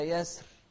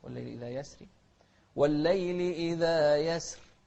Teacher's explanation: هني الراء لها حكمين، يجوز التفخيم ويجوز لنا الترقيق